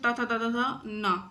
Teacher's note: त वर्ग जो है ना ये दात से बोला जाता है